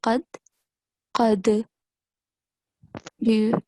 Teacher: Here we have the letter dal, sakin, because it doesn't carries a stroke like fatha, kasra, or dhamma. So you have to make a jerking sound.